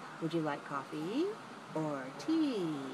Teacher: So we have rising and then falling. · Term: choice questions